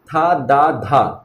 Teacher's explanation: तालू के साइड जीभ जा रही है और आगे दांतों को छू रही है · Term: दंत्य